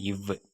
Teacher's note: கீழ் இதழும் மேல்வாய் பல்லும் இணைவதால் பிறக்கும் எழுத்து